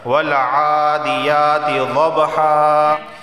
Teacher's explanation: وقف کی صورت میں دو زبر کو ایک زبر پڑھتے ہیں، جب دو زبر آ جائیں تو وقف کی صورت میں اسے ایک زبر پڑھا جاتا ہے، اس طرح والعادیات ضبحا۔